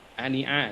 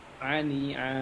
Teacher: Jadi mad iwat jadi dibaca tidak tanwin tapi dipanjang ya.